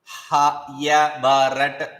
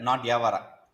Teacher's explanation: Ha should be Mahaprana. Just give more prana to it. Breathe to it.